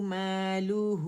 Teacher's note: ما کی آواز ماں نہیں بولیں گے، ٹھیک ہے. ماں کی والی آواز اوپر جائے گی.